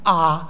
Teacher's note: è la vocale bassa centrale non arrotondata che è quella che Ci obbliga ad aprire al massimo la nostra bocca